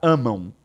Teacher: Então, amam, eu tenho um U escondido aqui, que nós chamamos de semivogal.